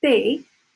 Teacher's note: And hopefully you can hear there's no puff of air in Spanish.